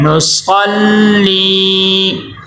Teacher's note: یاء مدہ ہے، یاء مدہ کو ایک الف کے برابر لمبا کرتے ہیں